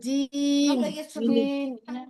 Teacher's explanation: জিভের মাঝখানে তার বরাবর উপরে তালুর সঙ্গে লাগিয়ে